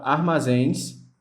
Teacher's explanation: A palavra armazéns, ela tem a sua última sílaba, a sílaba mais forte da palavra. Então, por esse motivo, ela é acentuada, porque ela tem a sua última sílaba mais forte e terminada em ens, que está dentro da nossa regra, tá bom? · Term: oxítona